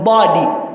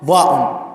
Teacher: Tofauti ya dad ni pembezoni mwa ulimi na dha inatoka kwenye ncha ya ulimi maa atrafi thanaya al-ulya, kwenye ncha za meno ya juu.